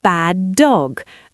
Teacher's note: The rule is you marry the sounds. You merge them into one long sound. You don't say bad dog, you say bad dog.